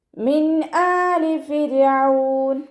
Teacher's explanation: നൂൻ സാക്കിനയ്ക്ക് ശേഷം ഹൽക്കിൽ നിന്നും പുറപ്പെടുന്ന ഏതൊരക്ഷരം വന്നാലും നൂൻ സാക്കിനയെ വ്യക്തമാക്കി മണിക്കാതെ ഉച്ചരിച്ചു കൊടുക്കുക